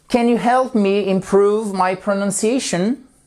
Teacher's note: vous remontez parce que c'est une yes no question